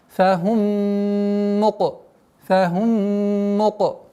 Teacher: А здесь у нас назализация в размере 2 огласовок, полная назализация. Идгам шафави называется губное слияние, полное слияние. · Идгам шафави называется губное слияние, полное слияние. Губное слияние с ассимиляцией полной.